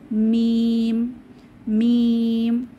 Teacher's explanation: দুই ঠোঁটের শুকনা জায়গা থেকে মিম উচ্চারিত হয়। আমরা গত ক্লাসে বায়ের মাখরাজ পড়েছিলাম, বা দুই ঠোঁটের ভেজা জায়গা থেকে উচ্চারিত হয়, তবে মিম দুই ঠোঁটের শুকনা জায়গা থেকে উচ্চারিত হয়।